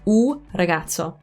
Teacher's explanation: In italiano non si dice un ragazzo, perché usare la N e poi la R subito è praticamente impossibile se state parlando velocemente